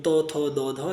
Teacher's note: ত থ দ ধ উচ্চারণ করার সময় আমাদের জিহ্বাটা দাঁতে বাড়ি খায়। যেমন ত থ দ ধ, দেখেন সব জিহ্বাটা যে দাঁতে বাড়ি খাচ্ছে।